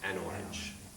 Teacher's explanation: but porch notice there's this break right we don't like that we like things to be smooth so you add an N in the middle and it becomes an orange